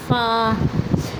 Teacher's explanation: سامنے کے دو دانت نیچے والے ہونٹ کے اندرونی حصے سے لگیں تو اس سے فا ادا ہوتا ہے